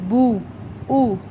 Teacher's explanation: پیش ہونٹوں کو گول کر کے ادا ہوگا